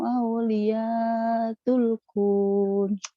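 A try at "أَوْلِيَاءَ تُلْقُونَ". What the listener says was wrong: Aulia, A-nya ketinggalan.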